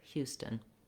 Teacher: In the ST, it's more of an unaspirated T sound.